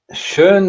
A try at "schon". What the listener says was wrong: There, it's not schön. It's schon.